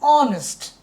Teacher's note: সেখানে H silent হয়ে গেছে, পরবর্তী ও অনুসারে ওর সাউন্ড হচ্ছে অ। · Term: এইচটা সাইলেন্ট